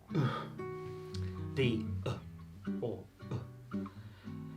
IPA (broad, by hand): ə